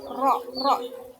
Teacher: Terjadinya getaran antara lidah dan gusi.